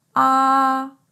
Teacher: and for the first tone i will go like this ah the first tone is pronounced in the upper range of your normal speaking voice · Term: high level tone